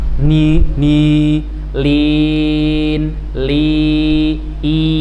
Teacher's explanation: Takhlis, bersih dari pengaruh dengung ya, karena tidak ada suara makhraj dengung.